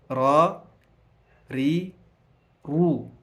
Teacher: ikija ri unaikuta iko nyepesi, lakini ikija ra, ru ina uzito fulani